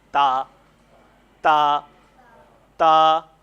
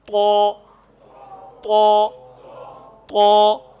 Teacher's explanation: تا کو صرف ہم نے نرمی سے ادا کر دینا ہے، تا تا تا، اور جو تو ہے اس کو تھوڑا سا منہ گول کر کے موٹا کرنا ہے